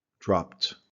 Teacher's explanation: I believe with drop, we're going to use a T sound. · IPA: /t/